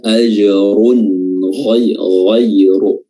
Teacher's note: Di sini juga di sini izhar ya, izhar halqi karena huruf ghain termasuk huruf yang keluar dari al-halq atau adna al-halq, tenggorokan paling atas ya. Dan tanwinnya dibaca jelas ya, ajrun ghairu.